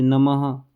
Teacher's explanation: इसको विसर्ग की मात्रा कहते हैं। यह हमेशा शब्द के अंत में आता है और बोलते समय हल्की ह की आवाज देता है।